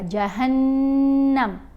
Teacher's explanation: जब हा को नून से मिला रहे हैं ना उस वक़्त गुन्ना होगा